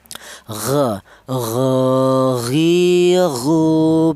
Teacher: Huruf gin itu keluarnya huruf dari tenggorokan bagian atas